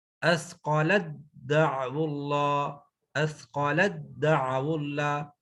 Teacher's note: تا ختم ہوگی، دال میں مرج ہوگی